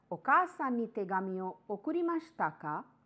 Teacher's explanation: Intonation is rising because you are asking a question.